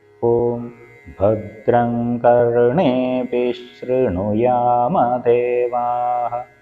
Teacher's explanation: വിസർഗ്ഗത്തിന്റെ ഉച്ചാരണം അവിടെ ഉണ്ടാവില്ല പകരം ശകാരത്തിന്റെ ഇരട്ടിപ്പായിരിക്കും ഉണ്ടാവുക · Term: ശകാരത്തിൻ്റെ ഇരട്ടിപ്പായിരിക്കും